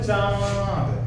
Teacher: इसके उच्चारण में नाक और मुह दोनों से आवाज आता है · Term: अनुनासिक